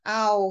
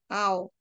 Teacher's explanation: membulat karena au gitu ya au maksudnya belakang belakang lidah ya belakang lidah kemudian tinggi dan posisinya lidah itu membulat posisi mulut membulat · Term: belakang tinggi membulat